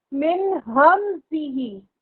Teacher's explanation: نون ساکن کے بعد ہاں موجود ہے، حروف حلقی موجود ہے، غنہ بالکل نہیں ہوگا